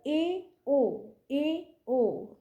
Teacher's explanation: এবার এ ও এ ও যখন আমরা উচ্চারণ করছি জীবটা দেখা যাচ্ছে প্রথম যে স্বরধ্বনি উচ্চ স্বরধ্বনি উচ্চারণ করতে জীবটা যতটা উঁচু হয়েছিল তার থেকে একটু সামান্য নিচের দিকে থাকছে সেজন্য এটা হল উচ্চ মধ্য